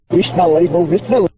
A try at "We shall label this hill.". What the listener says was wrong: Oh, is that hell or hill? It's hill. It's hill, not hell. It's hill.